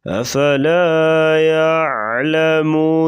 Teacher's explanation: افلا کا جو لام ہے، لام کو تھوڑا سا لمبا کریں گے، الف مدہ آ گیا ہے · قاف موٹے حروف سے، اس لیے اس کو موٹا کر کے پڑھیں گے